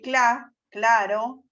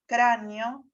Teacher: el sonido velar sordo correspondiente a la K es representable en español por la C ante las vocales A, O y U, o por Q ante las vocales E y I, y siempre por C ante las consonantes L, R, tal como puede observarse en la siguiente sinopsis.